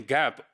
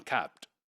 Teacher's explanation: P in gap would be longer than p in capped